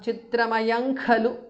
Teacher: Chitramayang Khalu because of Sandhi. Anuswara changes to Ngada.